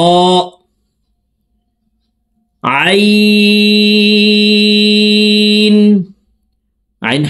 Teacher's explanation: আইন হরফকে 3 আলিফ টেনে হলকের মধ্যখান থেকে উচ্চারণ করতে হবে